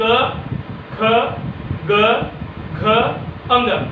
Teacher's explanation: मतलब कंठ का प्रयोग होता है, इसलिए इनको कहा जाता है कंठव्य व्यंजन।